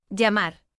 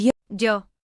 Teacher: Traditionally in Spain, llamar, and yo, were pronounced with different sounds, llamar, with a palatal lateral and yo, with a palatal fricative. However, in many regions, especially in Latin America, those two sounds have merged.